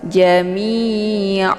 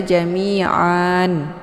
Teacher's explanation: iwad ini ada Alif ya Yang sebelumnya berharakat tanwin fathah ya Nah untuk Mad iwad ini dibaca panjang 2 harokat